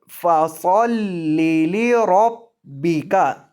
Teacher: آپ نے یہ با مشدد کو سختی کے ساتھ پڑھنا ہے، با مشدد کو آپ نے سختی کے ساتھ پڑھنا ہے۔